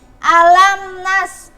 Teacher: Ini ada mim mati bertemu dengan nun, dibacanya maka jelas. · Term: idhar syafawi